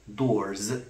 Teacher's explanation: the S takes on the voicing feature of R and it becomes also voiced and the actual pronunciation is doors rather than doors where vowels